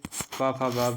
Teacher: ये ओष्ठ ध्वनियाँ हैं